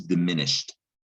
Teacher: But you don't hear shed. You don't hear the E of the ed in diminished. And you also don't hear D. This follows that rule about ed making a T sound, diminished.